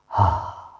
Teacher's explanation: कंठ द्वार, द्वार के पास जाएंगे और खोलेंगे तो एक हा ऐसे आवाज़ आती है, आपको लगता है हा कितनी अच्छी हवा आ रही। उसी तरह से हा का उच्चारण कंठ द्वार से, ग्रोटल से होता है